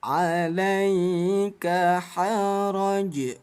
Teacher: hukumnya menjadi qalqalah kubro. Bunyi jim kita pantulkan.